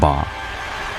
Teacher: The ba sound, a bilabial plosive, is made at the front, with the lips